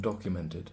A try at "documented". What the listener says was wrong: You say more I'm saying more Documented. More schwa.